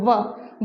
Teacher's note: ऊपर के जो दांत है वो नीचे वाले होंठ के टकराएंगे और जो ध्वनि है वो निकलेगी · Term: दंतोष्ठ्य